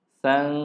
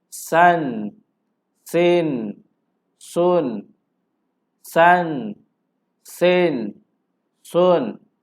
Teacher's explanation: Bunyi tanwin, bunyi nun mati tetap bunyi, tapi dia tiada dengun. Dia tidak boleh dengun.